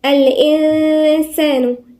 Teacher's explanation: الإنسان هنا في غنة عند الإنسان، ليه؟ النون الساكنة وبعديها السين غنة إخفاء